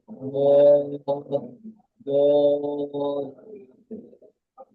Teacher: زاد ألف زبر زا এটা জদ নয়, এটা বদ। জিভের কিনারা, জিভের কিনারা মাড়ির দাঁতের গোড়ার সাথে লাগিয়ে উচ্চারিত হয় বদ, বদ। এটা জিভের আগা, এটা জিভের আগা, জিভের কিনারা হচ্ছে জিভের দুই সাইড।